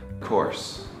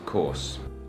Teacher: Americans pronounce the R very clearly, and we use the back of our tongue to make that sound. But the British people basically just make the vowel sound longer, and they don't really pronounce the R at all.